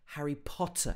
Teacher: he actually pronounces both of the t's in harry potter